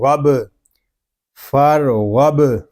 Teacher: با ساکن میں کلکلہ خوب ظاہر کریں گے